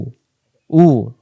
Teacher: উ হলকের প্রথম থেকে শক্ত করে উ